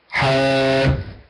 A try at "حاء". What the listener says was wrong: من غير المبالغة في فتح الفك، لا أقول حاء بل أقول حاء متوسط.